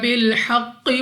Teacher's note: कौफ मुस्तालिया में से है, मोटा पढ़ना है मुंह और आवाज को खोलकर।